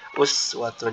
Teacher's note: jadi huruf sin itu sifatnya rikhwah, jadi mengalir suaranya.